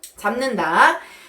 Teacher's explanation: 받침 비읍이 비음인 니은과 만나서 비음인 미음으로 발음이 됐어요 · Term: 비음화